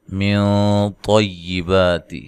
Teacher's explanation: طا کو خوب موٹا کریں، اور یہاں جو غنہ ہے نون ساکن کا اخفا ہے، موٹا اخفا کرنا ہے